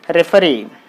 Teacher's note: the word is ending with the ee so you put the stress on the last syllable